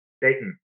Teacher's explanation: Dayton, day, glottal, stop, in. You're not supposed to hear the T.